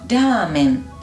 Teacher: Es como la R suave del español, como la cara. Jamás es la R de ratón. Ese jamás. Y aún más suave que el español.